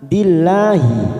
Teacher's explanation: la lam jalalah karena didahului kasroh maka kita baca tarkik tipis.